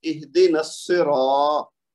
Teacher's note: صاد کو ڈبل کریں گے، زور دیں گے، تو صاد کے نیچے زیر ہے تو اہدنا السی. پھر را کو موٹا پڑھیں گے کیونکہ را کے اوپر زبر ہے، اور پھر الف آگے آنے کی وجہ سے 2 حرکت تک لمبا کریں گے، اہدنا الصراط.